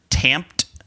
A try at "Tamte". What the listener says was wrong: I think that last E is silent.